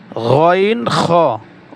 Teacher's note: 3 নম্বর মাখরাজ, হলকের শেষ হইতে গইন খ উচ্চারিত হয়